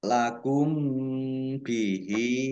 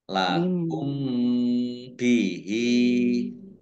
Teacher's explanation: Mim sukun bertemu dengan huruf ba ini huruf satu-satunya ya hukum bacaan mim sukun yaitu ikhfa safawi dibaca samar-samar